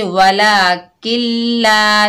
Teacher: जो नून साकिन है इसकी आवाज़ बिल्कुल नहीं आएगी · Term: इदगाम बिला गुन्ना